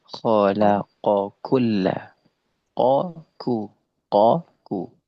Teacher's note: Qof dijelaskan secara sifatnya jahr. Kaf dijelaskan secara sifatnya hams. Misalnya khalaqok ku.